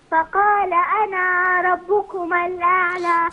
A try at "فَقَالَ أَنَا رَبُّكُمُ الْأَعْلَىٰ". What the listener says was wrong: فقال مش أنا ربكم، لا هنا وصلا، فقال أنا ربكم، فقال أنا ربكم الأعلى.